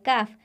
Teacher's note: زبان کی جڑ جب سخت تالو کو لگے تو کاف ادا ہوتا ہے، کاف، اور اگر نرم تالو کو لگے تو قاف ادا ہوتا ہے، یعنی بڑا قاف ادا ہوتا ہے، اور اگر سخت تالو کو لگے تو چھوٹا کاف ادا ہوتا ہے۔